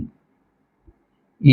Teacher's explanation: इ हा स्वर तालव्य प्रकारामध्ये मोडतो तालव्य स्वर आहे